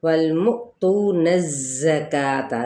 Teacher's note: کا پہ کھڑا زبر ہے، ایک الف کے برابر کھینچیں گے